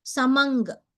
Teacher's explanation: अनुस्वारानन्तरं ककार अस्ति परसवर्ण भवति